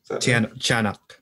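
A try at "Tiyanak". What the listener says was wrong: It's like cha instead of tia.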